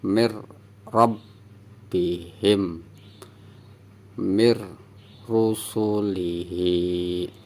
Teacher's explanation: Ini nun sukun bertemu huruf ro, nun sukunnya tidak terbaca, jadi dibacanya langsung mir, jangan min · Ini nun sukun bertemu ro, nun sukunnya jangan dibaca atau hilang ya. Jadi dari mi masuk ke ro.